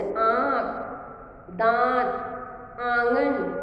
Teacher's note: नाक से भी आवाज निकल रही है और मुंह से, दोनों से निकल रही है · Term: अनुनासिक